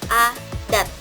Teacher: jika bunyi teh pada posisi koda, maka berubah menjadi alveolar tetapi tidak klosif